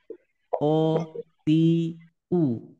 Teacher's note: tidak ada hembusan udara yang keluar tidak ada udara yang keluar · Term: sifat jaher